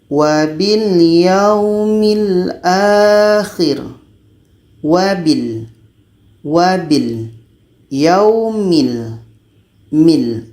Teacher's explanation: Ah dalam lam ini tidak ada angin atau hamas. · la ini kebiasaannya memang akan dibaca secara jahar, tidak ada angin di sini